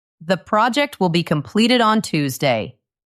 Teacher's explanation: The way a statement should sound. Listen to my voice go down at the end. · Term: falling intonation